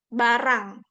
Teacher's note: Kalau kita misalnya barang, ra tuh tipis ya, barang tuh tipis. Kalau di Arab ro kan, ro, bukan ra.